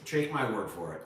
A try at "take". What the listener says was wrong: Trake? Did you say trake? You said trake, not take. Trake. Trake my word is what you said.